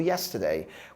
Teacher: Cuidado com a palavra yesterday, porque a sílaba tônica é a primeira.